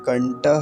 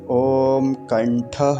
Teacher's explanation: ये जो ठक है ठ है इसके स्थान पर ट नहीं बनाएंगे